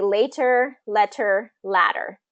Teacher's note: when a T is surrounded by vowels a lot of times it becomes a D pronunciation so again it can be later letter ladder okay you can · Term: tap T